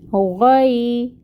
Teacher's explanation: یہاں پہ یائے ساکن سے پہلے فتحہ ہے تو لین کا قاعدہ ہو رہا ہے، لین کو نرمی سے پڑھتے ہیں